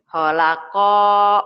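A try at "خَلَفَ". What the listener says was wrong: Holafa. Bukan holako. Kan titiknya 1.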